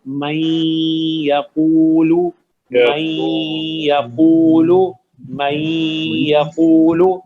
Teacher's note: اب ذرا غور کریں, میں جیسے پڑھ رہا ہوں من یقول, اس میں نون کی آواز نہیں ہے, من نہیں ہے, لیکن کیونکہ نون آپ نے یا میں داخل کیا ہے تو ایک غنہ ہے جو نون کی وجہ سے آ رہا ہے